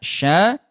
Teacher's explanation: Keluarnya itu di tengah lidah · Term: huruf syin